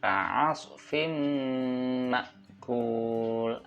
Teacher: ini ada kasrah tanwin bertemu dengan huruf mim. Ini bacaannya idgham bi gunnah. Jadi harus mendengung dan masuk.